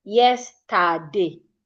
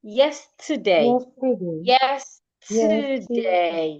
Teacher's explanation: When you get to te e r, your energy comes down a bit.